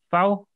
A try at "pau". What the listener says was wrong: Little bit longer. Little bit longer. Gliding walls are also red like around 2 seconds. Pau kahum.